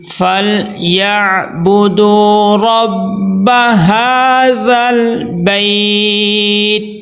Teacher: پھر یہاں پہ یائلین آ گئی ہے، تو یائلین کو نرمی سے پڑھیں گے